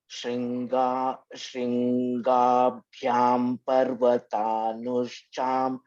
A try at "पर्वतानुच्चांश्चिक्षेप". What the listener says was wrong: Nush, no, there is no sh. Parvatanu Chaunsh, double ch. Nush is not there, my dear. Double ch. Nuch.